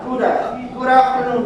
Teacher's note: I hear good afternoon. The D like an R.